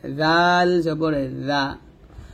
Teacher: আর জাল যখন উচ্চারণ করবো জিহ্বার আগা উপর দাঁতের আগায় লাগবে, পাতলা করে, জাল জবর জা।